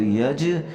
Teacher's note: یہاں جیم کے اوپر ہم قلقلہ کریں گے، یج اسرا، یج یوں نہیں بولیں گے۔